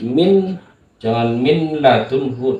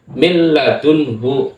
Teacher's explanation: Dileburkan, nunnya ini dileburkan atau dihilangkan. Mil ladunhu, milnya ini tidak nampak, dileburkan. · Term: idgham bila gunnah